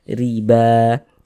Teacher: ra memiliki harakat kasrah ee maka huruf ra dibaca apa tadi dibaca tarqik Dibaca tipis tipiskan huruf rnya